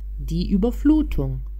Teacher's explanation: Ovdje isti primjer kao kod Ö. Namjestite usne na izgovor slova U, a pokušajte izgovoriti glas I.